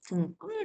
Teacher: 근데 조심하셔야 돼요. 울림소리 이응 뒤에서 된 소리 나와요.